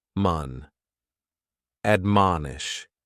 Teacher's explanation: admonish has 3 syllables, and the stress is on that second syllable